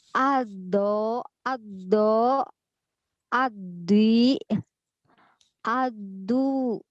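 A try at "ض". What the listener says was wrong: oke, itu pangkailahnya belum naik.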